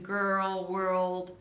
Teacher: when there is an L right after as in girl world then you want to prolong the R a little bit and then make sure that your L is a dark L